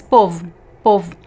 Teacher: the second one is unstressed so it's weak and the O is reduced to U so same thing happens with the letter e at the end · the last O is very weak. We can barely hear it sometimes if we speak fast. · So the vowel O is reduced to U in unstressed syllables. So usually at the end of words, as many examples that we saw today, like povo, povo, the last O is very weak. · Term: vowel reduction